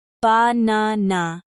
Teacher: in banana, the stress is on the second syllable, ba-na-na. Stressing the wrong syllable can make a word harder to understand, so practicing this will make your speech clearer. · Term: word stress